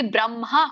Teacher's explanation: ಸಂಯುಕ್ತ ಹಕಾರ ಇದ್ದಾಗ ಒತ್ತು ಮೊದಲು ಹೇಳಿ ಹ ಆಮೇಲೆ ಹೇಳಬೇಕು. ಹಾಗಾಗಿ ಬ್ರಹ್ಮ ಆಗುತ್ತೆ.